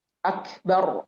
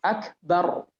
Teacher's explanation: Ra-nya sukun, sebelumnya fathah. Bar, maka kita harus tebal.